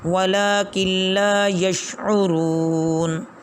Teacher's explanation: اب یہاں پر کاف ہے، کاف کے بعد نون آ رہا ہے، نون ساکن ہے، ساکن نون یعنی نون پر جزم ہے، اس کے بعد لام آ رہا ہے، تو ضابطہ یہی ہے کہ نون ساکن کے بعد جس نون پر جزم اس کے بعد اگر لام آ جائے تو اس کو نہیں پڑھیں، نون جزم والی کو نہیں پڑھیں گے، بلکہ نون سے پہلے والے حرف کو آگے لام کے ساتھ ملائیں گے